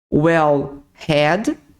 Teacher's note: o h no inglês tem som de R fraco Então quando você fala well had você vai usar como se